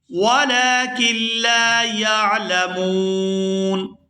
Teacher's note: وَلَكِن لَا يَعْلَمُونَ، یہاں وقف کریں گے تو وقف کی صورت میں نون جو ہے ساکن ہو جائے گا اور وقف کی صورت میں یہاں مد بھی ہوگی